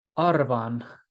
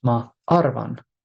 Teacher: R's in Estonian are flipped. And we touched on this a little bit earlier, but I want to emphasize they are not rolled the way they are in Spanish.